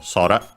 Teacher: it's accented on the first syllable, so sora